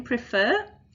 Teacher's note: So let's look at preferring and preference, because here, depending on how that stress has happened, depends on whether we double or not. So in prefer, the second syllable is stressed, and then we're adding a vowel suffix, so we're going to double that R.